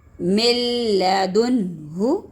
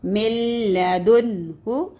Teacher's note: اب دیکھیں نون ساکن کے بعد دوبارہ لام آ گیا، من لدنہ، نون ساکن کے بعد غنہ نہیں کریں گے، اظہار یہاں پر، یہ یہاں پر اظہار اور یہاں پر نون ساکن کے بعد لام، من لدنہ.